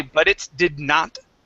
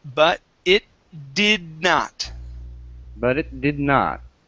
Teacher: we say butt it butted so we're gonna swallow this tea we're gonna push this t into the d sound